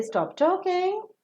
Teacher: the request will take up the rising tone